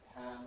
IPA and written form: pæn (pan)